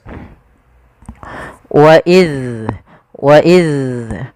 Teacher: Adalah ujung lidah kita menempel dengan gigi sari atas. Wa iz, dan dia punya sifat rakhawah, mengalirnya suaranya.